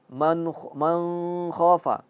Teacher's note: ketika nun mati bertemu K dia harus jelas. Man khoa tidak ada ikhfa tidak ada idgham.